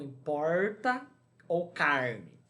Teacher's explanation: o r caipira às vezes tão intenso que parece valer por dois ou três